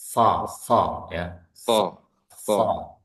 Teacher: Yang mana secara makhraj huruf shad ini suaranya keluar dari celah gigi seri atas dan dan bawah. Yakni ujung lidah di gigi seri bawah.